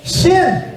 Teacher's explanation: sifat tafasi, udaranya menyebar, berhamburan, itu huruf shin